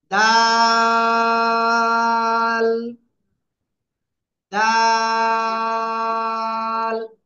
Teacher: ওকে, আমরা এই অক্ষরটা উচ্চারণ করবো জিহ্বার আগা, সামনের উপরে দুই দাঁতের গোড়ায় লাগাবো, লাগিয়ে 3 আলিফ টেনে উচ্চারণ করবো।